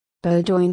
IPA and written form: ˈboʊdᵻn (Bowdoin)